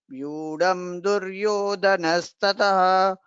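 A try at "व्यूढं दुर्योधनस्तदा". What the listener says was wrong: Vyūdham Duryodhanastada. The Mahapranas should be clearer.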